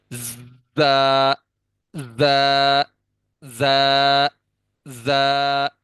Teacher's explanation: ऊपर और नीचे वाले दांतों के किनारों को आपस में मिलाएंगे, और जबान की नोक हल्की सी दरमियान में टच होगी। आपको पता नहीं चलेगा कि टच हुई है, लेकिन टच होगी।